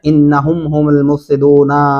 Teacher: انہم یہاں پہ آپ نے غنہ کرنا ہے